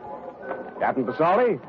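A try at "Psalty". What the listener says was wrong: P is silent, son, as in Prasad.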